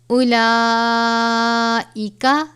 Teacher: بڑی مد ہے، 5 الف کے برابر مقدار ہے اس کی